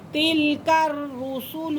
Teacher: کاف کو را کے ساتھ ملائیں گے کیونکہ را مشدد ہے، مشدد حرف اپنے پہلے والے حرف کے ساتھ مل کر پڑھا جاتا ہے۔